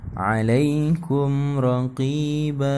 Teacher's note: Jadi raqiban kalau kita diwakafkan jadi raqiba dan dibaca panjang ya.